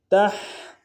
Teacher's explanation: تا کو ہا کے ساتھ ملانا ہے، ہا کو گہرائی سے ادا کریں گے۔